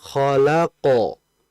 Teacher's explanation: ketika memantul, posisi pangkal lidah, posisi bagian belakang lidah itu naik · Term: sifat tebalnya